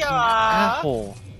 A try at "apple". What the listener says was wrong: Say apple like with apples. Your mouth open. No, with your mouth wide open.